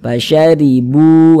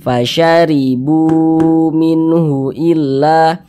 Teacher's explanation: Nah, huruf yang memiliki tanda baca dhammah itu dibaca panjang karena dia berposisi tepat sebelum waw sukun. Sehingganya bu kita baca panjang. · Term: mad tabi'i